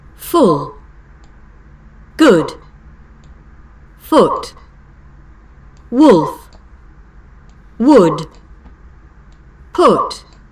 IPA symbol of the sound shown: ʊ